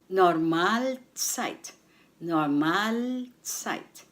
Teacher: the stress is on the second syllable Mal